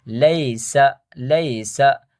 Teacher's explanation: لام یا زبر لئی، سین زبر سا، لئی سا، یہ حروف لین میں سے، یا ساکن سے پہلے زبر ہو تو یا حروف لین ہو جاتا ہے، اس کو کیا کہیں نرم پڑھتے ہیں